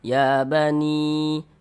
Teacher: Kalau ada huruf ya ada tanda sukun, sebelum ya sukun ada harokat kasroh, maka huruf yang memiliki harokat kasroh ini dibaca panjang, sehingganya ni dibaca panjang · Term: mad tabi'i